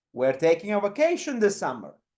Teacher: in this case vacation is the key or the focus word here that we want to highlight